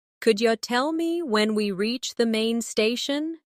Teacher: Could you tell me when we reach the main station? Notice how could you becomes could ya.